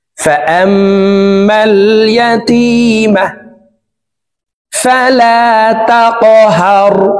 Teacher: তাসদিদওয়ালা মিমের সাথে 3 সেকেন্ড পরিমাণ গুন্নাহ করে ধরে রেখে পড়ব। ফাআম্মাল ইয়াতীমা ফালা তাকহার, কফ কলকলার হরফ উপরের দিকে ধাবিত করে ধাক্কা দিয়ে উচ্চারণ করব।